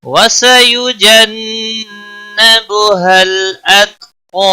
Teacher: वसयु किसी भी हरकत वाले हरफ को खींचना नहीं, जन नून मुशद्दद पर गुन्ना होगा, बुहल लाम को हिलाना नहीं, अत ता पर कलकला नहीं होना चाहिए, क़ा अलिफ मद्दा के साथ वक़फ़ होगा।